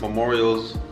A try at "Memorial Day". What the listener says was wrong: Memorial Day. Day, not Memorials.